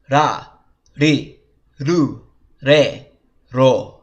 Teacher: all the R sounds, the R column, have the R and the L sound rolled together